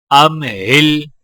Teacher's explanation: حمزہ کو میم کے ساتھ ملاتے ہوئے غنہ نہیں کیا جائے گا کیونکہ میم کے آگے حروف ہلکی ہا ہے.